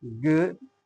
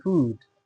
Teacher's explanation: The first one has a short uh sound and the second one has a long ooh sound.